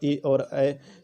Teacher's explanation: कंठ तालब यानी कंठ और तालु से इसका उच्चारण होगा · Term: कंठ तालव्य